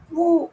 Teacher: ஊ சொல்லும் போது உதடுகள் குவியும்.